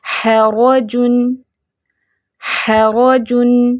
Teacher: ح لائٹ ہے، ح کی ساؤنڈ آپ نے ٹھیک رکھنی ہے، را کو فیٹ کرنا ہے